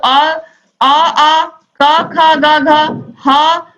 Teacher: इन वर्णों के उच्चारण-स्थान कंठ से होता है यह हम कंठ से बोलते हैं